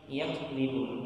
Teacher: huruf kaf sama qaf itu berasal dari satu makhraj ya, atau tempat keluar, yakni pangkal lidah · pada kata yakdzibun kafnya kalau bisa itu dikasih nafas ya